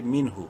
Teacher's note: نون ساکن کے بعد ہا حروف حلقی میں سے ہے، اظہار کریں گے اس نون میں ، یعنی نون کو ظاہر کر کے پڑھیں گے، منہ، واو